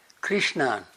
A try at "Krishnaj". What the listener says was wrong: J at the end.